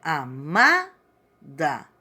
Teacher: Então, a sílaba tônica é o ma.